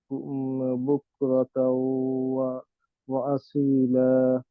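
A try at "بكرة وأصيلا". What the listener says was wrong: এই যে আবার গুন্না মিসিং আপনার, মার্জিং হয়েছে গুন্না হয় নাই। বকুরা তাউ, তাউ, আমার আমার সাউন্ড আসতেছে তাউ নাক দিয়ে। বকুরা তাউ ওয়া নাসিরা, ওয়া আসিলা। গুন্না মানে হচ্ছে সাউন্ডটা নাক দিয়ে আসবে।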